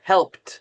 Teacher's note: you're saying the L, the P, and the T all together